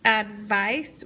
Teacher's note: we hear the long I in the second syllable